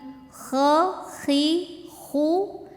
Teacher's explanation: nah ini keluarnya dari tenggorokan paling atas tebal